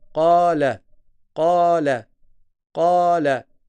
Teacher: Là, j'ai prolongé parce que j'ai un alif.